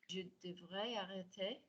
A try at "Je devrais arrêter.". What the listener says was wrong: That was some nice joining.